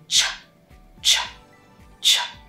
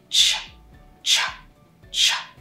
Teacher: There's an explosion and it's a palatal sound that is a release. So there's both a plosive component and a fricative component. · your tongue comes up, it does almost a plosive, and then it goes into the SH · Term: affricate CH, the affricate CH